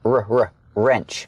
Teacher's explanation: the W is silent so it's pronounced with the r sound first